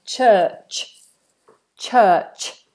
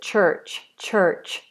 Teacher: in British English, which is different to American English, we do not pronounce these middle R's.